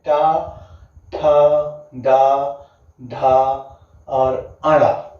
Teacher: ध्वनियों के उच्चारण में तालु का सबसे ऊपरी भाग मदद करता है उसे क्या कहते हैं, आपका मूर्धन्य कहते हैं